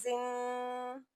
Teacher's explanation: غنہ کی آواز آئے گی یعنی آواز کو ہم ناک میں چھپائیں گے،